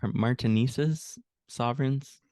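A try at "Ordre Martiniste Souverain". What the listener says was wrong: Yeah, Order Martinist. The final S is silent in French. So Order Martinist Souverain. That last is like a kind of a nasal guttural thing. Souverain.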